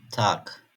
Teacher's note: G harfi kelime sonunda genellikle K gibi okunur.